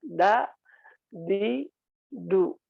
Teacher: Jadi jangan pengucapan da seperti jangan seperti ta ya yang mengalirkan nafas, apalagi sampai berlebihan.